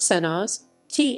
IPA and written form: sɛnɔˈʒeːtɛ (Senožete)